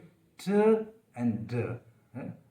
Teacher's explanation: और जो साउंड है, इसका जो तरीका है, मैनर है, वो है प्लोसिव, कि एयर ब्लॉक होती है पर एकदम सडन रिलीज होती है। तो ये 2 साउंड हुए ट एंड ड। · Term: एल्वियोलर प्लोसिव